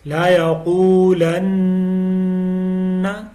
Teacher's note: نون مشدد کے اوپر غنہ ہے، قاف کو موٹی آواز میں پڑھنا ہے